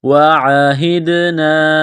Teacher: عین گلے کے درمیان سے زور لگا کر عین کو نکالیں گے